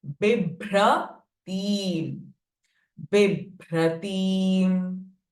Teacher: B is Hraswa, T is Dirgha. Bibhra, Bha is a Mahaprana. B is a Alpa Prana.